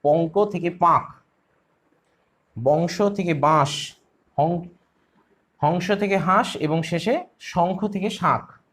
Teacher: তাহলে কি হবে, শব্দের মধ্যে এই পাঁচটি নাসিক্য ধ্বনি অর্থাৎ উয়া ইয় দন্তের ন মূর্ধন্য ম, এই পাঁচটি শব্দের মধ্যে এই পাঁচটি নাসিক্য ব্যঞ্জনের উপস্থিত থাকলে তারা নিজেরা যদি লুপ্ত হয়ে গিয়ে পূর্ববর্তী স্বরধ্বনিকে আনুনাসিক করে তোলে, তখন তাকে বলা হয় এই নাসিকী ভবন